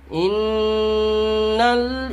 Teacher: نون کے اوپر تشدید ہے اس لیے نون میں غنہ ہوگا · نون ساکن کے بعد حروف اخفا میں سے سین ہے، اس لیے نون میں غنہ مع الاخفا ہوگا